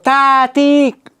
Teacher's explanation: Infitah ta harfimiz til bilan tanglay orasi ochiq, ingichka bemalol ta, ti, tovush bemalol o'tadi.